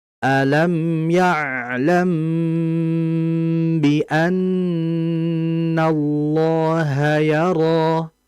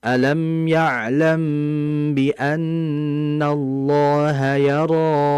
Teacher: Di situ ada mad asli sehingga kita cukup membacanya dua harakat saja tidak boleh lebih ya. Jangan kita baca alam ya'lam biannallaha yaro.